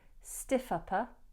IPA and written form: stɪfˈʌpə (stiff upper)